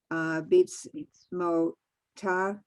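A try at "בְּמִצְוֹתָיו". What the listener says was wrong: Wait a second, you switched the 2 letters. Go a little more slowly. Oh, wait, a minute, mitzvotav. There's a v at the end. B'mitzvotav.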